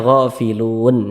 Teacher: Huruf nun tidak dibaca panjang, jadi hurufnya kita sukunkan. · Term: mad arid li sukun